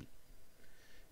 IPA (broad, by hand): t